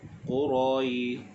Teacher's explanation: bacaan mad lin dipanjangkan dengan kadar 2, 4 atau 6 harakat.